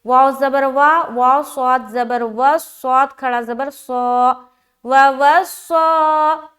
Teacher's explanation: سین کو باریک ہم ادا کرتے ہیں اور صاد کو موٹا ادا کرتے ہیں، جیسے کہ واو زبر وا، واو صاد زبر وس، صاد کھڑا زبر صا، وَوَصَّى۔